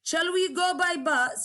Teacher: there is rising intonation in the last word.